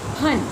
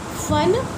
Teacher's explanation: फन, तब होंठ सटते नहीं और हवा का जोर होता है। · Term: नुक्ता